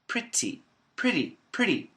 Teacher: The tongue flaps on the roof of the mouth, the alveolar ridge. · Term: flap T